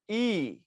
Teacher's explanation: ই বললে প্রথমত জীবটা চলে আসে সামনের দিকে এবং জীবটা উঁচুতে থাকে